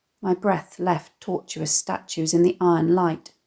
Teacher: the assonant /e/ and the semi-consonance of the fricative /th/ and /f/ evoking the sound of his breathing